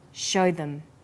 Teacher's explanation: Here, show is stressed and them is unstressed, so we say show them. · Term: vowel and consonant linking